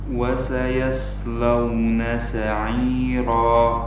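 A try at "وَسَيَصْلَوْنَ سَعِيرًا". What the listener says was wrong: Oh, itu sudah mantap ketebalannya, cuman ya-nya ikut tebal. Jadinya yos, ya-nya tetap tipis.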